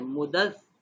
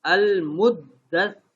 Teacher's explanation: یا اس کو اب کیسے ہے، پہلے دال کے ساتھ ہم نے سختی سے ملانا ہے. المدثر 2 دفعہ شد ہے تو دونوں جگہ پہ سختی ہوگی، دونوں جگہ کو سختی سے ملائیں گے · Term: تشدید